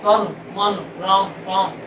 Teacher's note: क्योंकि हम अंत में, शब्दों के अंत में हर्ष आ जाए तो वो व्यंजनांत हो जाता है, स्वर गायब। आप तन मन राम काम कहीं कहिए तो माँ में से आ गायब है उच्चारण, क्योंकि आगे तो है लेकिन पीछे से गायब हो जाएगा।